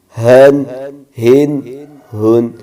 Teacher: یہ حلق کے درمیان سے آواز نکلنی چاہیے۔